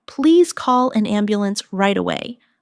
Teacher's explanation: Stress right away. So the listener understands the urgency.